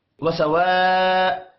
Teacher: الف کے اوپر بڑی مد ہے 5 الف کے برابر یعنی 5 سیکنڈ کھینچ کر پڑھیں گے